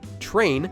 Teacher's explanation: the English word train is actually pronounced with a ch sound, although it's spelled with tr